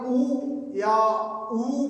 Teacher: अगर हम ऊ या ऊ बोले तो ये इनमें सहयोग सबसे ज्यादा ओष्ठ यानी हमारे होठों का हो रहा है, हमारे होठ बाहर आ रहे हैं। और इसको अगर ट्राई करना चाहते हो तो आप ऊ या ऊ बोलो, लेकिन आपके होठ बाहर नहीं आ रहे, बोल के देखो, नहीं बोल पाएंगे।